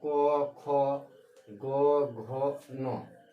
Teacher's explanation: तो क हो गया अल्प, फिर ख महा, फिर अल्प, फिर महा, फिर अल्प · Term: अल्पप्राण